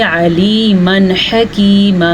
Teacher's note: علیمن حکیمہ، علیمن حکیمہ یہاں پہ اظہار کا قاعدہ ہو رہا ہے کیونکہ نون تنوین کے بعد ہا آیا ہوا ہے اور ہا جو ہے حروف ہلکی میں سے ہے تو نون تنوین کی آواز کو ظاہر کر کے پڑھیں گے